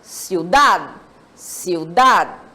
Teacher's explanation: quando eu pronuncio ciudad, observem que dad é a sílaba tônica